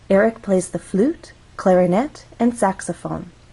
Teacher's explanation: When we have a list, we use rising intonation in each phrase until we get to the final item of the list. So, we're actually going to go up on flute, then we'll go up again on clarinet. · we're actually going to go up on flute, then we'll go up again on clarinet. This is our final item in the list, so we're going to go down. · Flute has 1 syllable, so we only have 1 syllable to make our voice glide up.